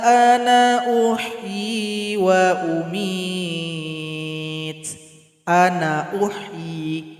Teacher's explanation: Ketika lanjut nun dibaca pendek saja. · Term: sifir mustaqil